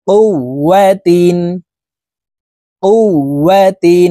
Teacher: উপরে তাসদিদ আছে, এই কারণে এই ওয়াওটি দুইবার উচ্চারণ করে পড়তে হবে। একবার পূর্বের হরফ কফের সাথে আরেকবার নিজ হরফের উচ্চারণ হবে।